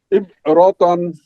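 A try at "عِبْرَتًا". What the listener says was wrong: হ্যাঁ।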